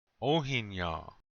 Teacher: You start to say the n sound, but you don't finish it. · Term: nasal n